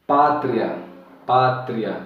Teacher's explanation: tem o I, que é a semivogal, e tem o A. Veja que o A ele se destaca mais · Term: ditongo crescente